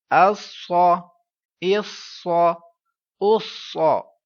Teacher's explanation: صاد صفیریہ اور مستعلیہ، موٹی آواز میں پڑھنا ہے ساتھ میں سٹی کی آواز کے ساتھ